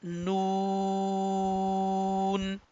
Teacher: तो इसका point of pronunciation भी अभी हम देखते हैं, लेकिन आपने ख्याल करना है कि इसको हम लंबा करके पढ़ेंगे और विदाउट नेजल साउंड के पढ़ेंगे